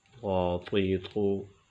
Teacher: طا کو ناظرین موٹا کر کے پڑھیں گے چونکہ یہ حروف مستعلیہ میں سے ہے، اس وجہ سے طا کو پر پڑھیں گے، موٹا پڑھیں گے۔